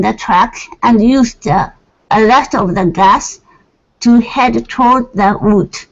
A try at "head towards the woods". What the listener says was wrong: Let's add some S's here. So head towards the woods. So add those S's.